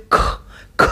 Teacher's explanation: लगता है और ह का जैसी ध्वनियां निकलती है जैसे ख ख बोलेंगे तो आपके मुख से वायु अधिक निकल रही है एनर्जी अधिक लगती है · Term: महाप्राण